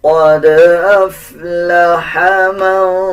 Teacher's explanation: قاف کو پر پڑھا جائے گا، دال کے اوپر جزم ہے، دال کے اوپر قلقلہ کیا جائے گا، اس ہا کو باریک پڑھیں گے۔